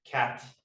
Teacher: they have this like slightly affricated final T